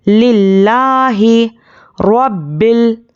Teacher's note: रॉ पर ज़बर है, रॉ को मोटा पढ़ना है। बा पर तशदीद है तो सख्ती से पढ़ेंगे।